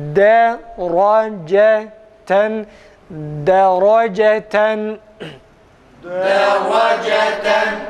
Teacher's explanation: Buna göre deraceten kelimesini okurken deraceten, bakın D dudak yeri de, ra önde, yani önde derken doğal halinde, dammeli hali gibi değil. D geride dudak, ra da önde, cimde tekrar geride.